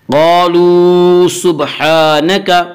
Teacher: قالوا سبحانک، قالوا واو مدہ، واو مدہ وہ واو جو ساکن ہو، اس سے پہلے پیش ہو، واو مدہ کو 1 الف کے برابر کھینچ کر پڑھیں گے۔ قالوا سبحانک، ہا کے اوپر کھڑا زبر ہے، کھڑا زبر کو 1 الف کے برابر کھینچ کر پڑھیں گے۔